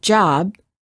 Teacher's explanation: But if we say the word job, we cannot continue the final B sound. We stop the airflow by closing our lips. Therefore, B is a stop. If we quickly open our lips, we can then release the stop and say job.